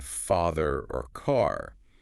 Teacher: Your tongue is more relaxed, flatter, the jaw's just a bit lower, and the sound feels like it comes from further back. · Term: AH sound